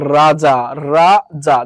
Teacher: এই র টা উচ্চারণের সময় জিহবার আগা বেশি কাঁপে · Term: কম্পন জাত, কম্পনজাত